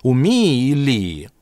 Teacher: «У Ми-и и Ли-и». В быстрой речи это просто долгое «и».